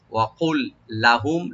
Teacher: ওয়াকুল লাহুম কাফটাকে রাইট দিবেন, কাপ ছোট কাপ যেন না হয়, জিব্বের গোড়া থেকে যেন আসে, এন্ড অফ টাং